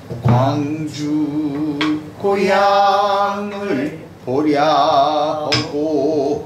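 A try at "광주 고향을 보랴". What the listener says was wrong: 거기서 광주 고향을 까지 만들어 을 해갖고 보랴까지 음이 내려오면 안 됩니다. 광주 고향을 까지만 내려와야 돼요. 그리고 보랴 또 떨어지죠. 고향을 보랴는 아니에요. 을까지 저기 뭐야 저 을이 보까지 내려오면 안 됩니다. 그 을이 놓는 꺾어 놓는 거기가 중간음인 거예요.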